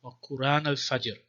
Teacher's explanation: wa Quran without the glottal stop. There's no hamza.